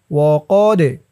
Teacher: বা একালিফটান খারা জবর وأخذهم الربا وقد কফ দিয়ে দাল ধরবে দালটা কলকলার হরফ ধাক্কা দিয়ে পড়তে হবে